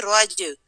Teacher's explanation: جیم کو ہلائیں گے. صحیح ہے شاباش. یہ کلکلا ہے.